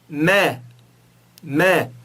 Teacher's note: Note que os meus dois lábios estavam juntos e depois se separaram.